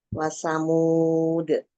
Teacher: karena dal itu termasuk huruf qalqalah, jadi dibaca dimantulkan